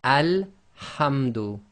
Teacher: So the rule is, with the definite article, there's no sound before it, you read the Hamza-Tul-Wasl as if it's got a fatha on it.